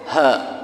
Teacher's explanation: Kalau ha besar yang bulat ada ekornya, itu dari pangkal tenggorokan